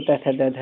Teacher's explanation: जिनका उच्चारण ऊपर के दांतों पर जीभ लगने से होता है